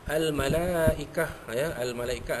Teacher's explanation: malaikah mad wajib muttasil enam harakat panjangnya